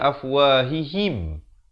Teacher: Ha baris bawah bunyi hi, bukan bunyi he. Jadi bila bertemu mim, him.